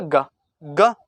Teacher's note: ग के उच्चारण में कम वायु निकली, इसीलिए इसे बोल दिया अल्प प्राण